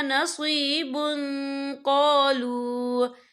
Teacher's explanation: یہ دیکھیں نصیب، بن با کے پر تنوین ہے، تنوین کے بعد جو ہے قوف آ رہا ہے اور قوف جو ہے اکفا کا ورڈ ہے تو ہم یہاں اکفا کریں گے، تنوین کی آواز کو ناک میں چھپائیں گے